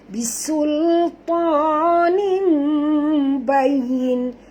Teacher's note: Bisul ta tebal, tapi sin tak tebal.